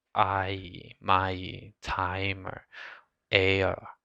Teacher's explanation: In English, there are some vowel diphthongs that don't exist in Korean, like I. So native Korean speakers tend to separate those vowels out